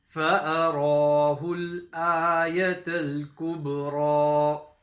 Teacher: You got the ba qalqala at the end.